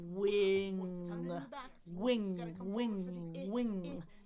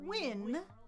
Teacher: W It's got to come forward for the I wing wing. Don't forget to put the air out your nose at the end.